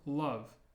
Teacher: it's almost like an L in the back of the throat